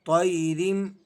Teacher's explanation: یا لین ہے، آپ اسے نرمی کے ساتھ اور بغیر کھینچے ادا کریں گے